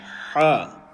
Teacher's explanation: correct pronunciation is Ha, from the middle of the throat. And you will feel a tingle near the Adam's apple.